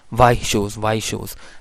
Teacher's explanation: कई स्पीकर्स जो हैं वाइट शूज़ जब प्रोनाउंस कर रहे होते हैं तो वाइट में टी की जगह वो ग्लॉटल स्टॉप को भी यूज़ कर लेते हैं